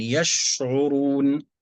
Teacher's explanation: حاول أن تأتي بصفة التفشي في الشين